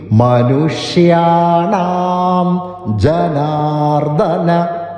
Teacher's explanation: മനു അവിടെ നു വർസ്യമായിട്ടുള്ള നു